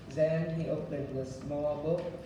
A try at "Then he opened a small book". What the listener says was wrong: Something with the THs. The Zen, not Zen, but stick your tongue out for the pronunciation of the TH. We stick our, not Zen, Then. You stick your tongue out.